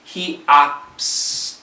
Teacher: Okay, the T is silent. The S kills the T.